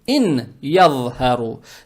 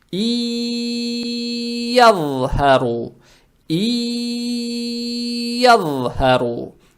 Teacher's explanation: буква нун превращается в букву я, за счет чего буква я удваивается, и букву я надо произносить удерживая. То есть и ядхару. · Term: идгам с гунной